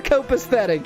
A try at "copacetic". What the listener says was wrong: Did you just pronounce it copacetic? Like aesthetic? Right, but halfway through the S.